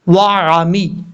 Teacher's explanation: اب نون کے بعد واو مدہ ہے، یہاں پر بھی ایک الف کی مقدار لمبا کیا جائے گا، نون واو پیش نو، آمنو، وعامی، واو زبر وا، آئین زبر آ، آئین کو کلیئر کرنا ہے، آئین کو حمزہ کی آواز میں نہیں پڑھنا